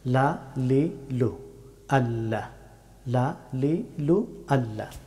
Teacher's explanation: লাম হরফটি উচ্চারিত হয় জিহ্বার সামনের অংশের কিনারা এবং উপরে তালুর শক্ত অংশ চুইয়ে লাম হরফটি উচ্চারিত হয়।